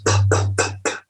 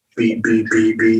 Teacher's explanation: a P is an unvoiced B, bilabial plosive